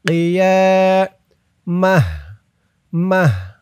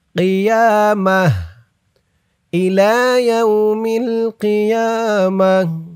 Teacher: অক্ফ করার কারণে এই গুল তাটা হা হয়ে গেছে